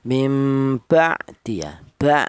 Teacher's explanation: huruf ain ini keluarnya berasal dari tengah tenggorokan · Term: idhar halki